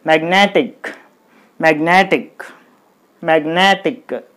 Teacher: Okay, this is the first syllable and N-E, ne, this is the second syllable. So you put the stress mark on ne